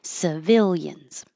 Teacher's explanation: It's the same I in every syllable.